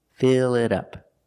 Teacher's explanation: We see the T sounds like a fast D.